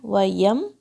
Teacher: واو کو وی کی طرح نہیں پڑھنا آپ نے، وَيَم، یا کو لائٹ رکھنا ہے، میم کو شیک نہیں ہونے دینا ہے.